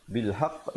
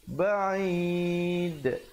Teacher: Bil haqq, tahan sekejap baru lepaskan. Yang ini ba'id, kita terus lepaskan tetapi masih kedengaran pantulannya, itu bezanya di situ. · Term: qalqalah akbar